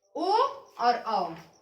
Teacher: पश्च स्वर क्या होता है, जीभ के पिछले भाग का प्रयोग होता है